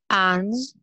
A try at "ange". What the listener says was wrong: Essayez de faire la nasale vraiment comme une nasale. En, en, en. Ange.